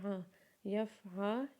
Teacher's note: عین کے اوپر جب زبر پڑیں گے تو عین کی آواز کو اپنے گلے سے نکالیں گے